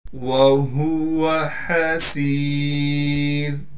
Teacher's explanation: ہا کو صاف کر کے پڑھنا ہے. گلے سے نکالیں گے. سین کے بعد یا مدہ ہونے کی وجہ سے سین کو ایک الف کی مقدار کھینچیں گے. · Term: باریک